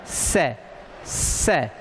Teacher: दांत के मूल में जीभ स्पर्श करती है और उच्चारण होता है स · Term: दंते स